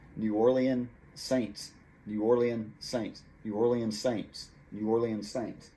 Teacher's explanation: new orleans ends with the letter s saints begins with the letter s so they kind of join up you could almost say you eliminate one of the s's